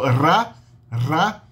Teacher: O R é visto como uma rótica, são chamadas consoantes róticas, tipicamente o Rá, uma alveolar vibrante. É a língua vibrante, vibrando nos alvéolos, perto do dente